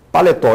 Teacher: paletó eu sei que paletó a última sílaba é a sílaba tônica